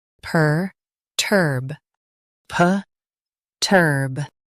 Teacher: Stress turb. Keep it strong and clear.